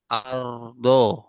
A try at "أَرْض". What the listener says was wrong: Kurang tebal. Aro, aro, aro. Gitu ya. Nah, jadi pangkal lidahnya ikut naik. Nah, ini kan kalau kita lihat roknya sukun, sebelumnya ada huruf yang berharokat fathah.